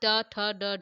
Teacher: यदि ट ठ ड ढ अड़ कोई पूछेगा तो उच्चार स्थान मुर्धा होगा